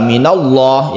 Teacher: minallah ini kita tebalkan disebut tafkhim karena sebelumnya ada fathah